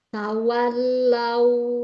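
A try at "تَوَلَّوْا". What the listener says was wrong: Ya, ditekan ke bawah. Tawallau. Suaranya, suaranya dari tenggorokan Suaranya jangan tawal, tawal, jangan ke atas. Jangan naik, jangan diturunkan terus. ah, tawa, wa ke bawah. Tawallau, wallau. Karena huruf-huruf yang punya sifat bainiyah, lam kan punya sifat bainiyah ya. Itu dia harus lembut. Tawallau, wallau. Jadi eh, jangan dihentak, jangan dinaikkan suaranya ke atas. Jadi ditekannya harus lembut, dilembutkan gitu, ya.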